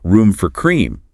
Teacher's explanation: The barista might say, room for cream. with a rising intonation.